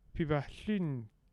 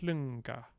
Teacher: So we need a velar nasal here.